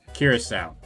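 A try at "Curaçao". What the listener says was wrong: Nope. Not cure, just curacao.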